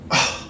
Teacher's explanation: Glottal stop, reduced mid central unrounded vowel, long glottal fricative.